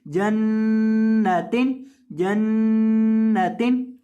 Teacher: अब यहाँ नून मुशद्दद है, नून के ऊपर तशदीद लिखी है। नून जब मुशद्दद हो तो नून को गुन्ना करके पढ़ते हैं